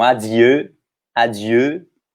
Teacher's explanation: O EU tem o som de E com bico.